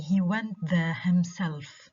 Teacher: The syllable in himself that is stressed is the second syllable.